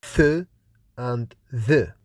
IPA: θ, ð